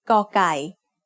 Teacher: The sound of กอไก่ as the initial consonant of a syllable is g. It is very similar to a hard G or an unaspirated K.